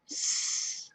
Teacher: Notice that it's blue, which means that it is unvoiced. If we make the S sound, our throat does not vibrate.